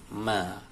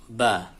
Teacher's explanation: Ini gambarnya huruf ba, dia di bibir. Makhrajnya asyafatain, yaitu bibir dengan tekanan agak kuat.